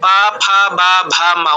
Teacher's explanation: প বর্গের অন্তর্গত মানে ঠোঁট দুইটা স্পর্শ করে। পা ফা বা ভা মা উচ্চারণ করতে গিয়ে দেখুন ঠোঁট দুইটা লাগছে।